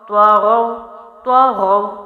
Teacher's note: طا بھی موٹا غائن بھی موٹا، واو وقف میں بھی آیا تو ہم اس کی آواز کو ایک ہی رکھیں گے